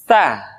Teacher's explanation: dikeluarkan dengan menyentuhkan ujung lidah kita dengan dinding dua gigi seri bagian atas diucapkan dengan suara dan nafas yang terdengar mengalir tah Hai vecu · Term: huruf Ta Tsa